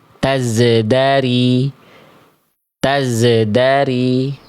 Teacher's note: huruf zai ini ketika sukun seperti ada suara yang memantul.